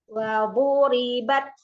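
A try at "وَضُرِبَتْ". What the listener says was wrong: Hamas pada taknya hilang.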